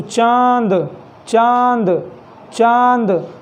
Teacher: अब देखिए इनका प्रयोग जो है हिंदी में, अब जैसे चांद हो गया, देखिए चांद इस तरीके से लिखा जाए, तो जब आप चांद वर्ड का उच्चारण करेंगे तो चांद चांद चांद, तो इस तरीके से देखेंगे जब आप उच्चारण करेंगे तो नाक पर जो है बल जा रहा है, बल जा रहा है कि नहीं जा रहा है, चांद चांद, तो इस तरीके से जो बल जा रहा है ये इस वर्ड के कारण जो ये चिन्ह है यही अनुनासिक होता है।